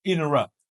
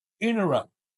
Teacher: you go interrupt but you do not use the aspiration here